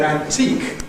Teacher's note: We all agree that the main stress is on teak, but is there a secondary stress on an or not?